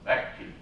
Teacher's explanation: we have a double consonant, vecchi, and again it's a stop consonant. It's a D voice stop, and it's just horrible.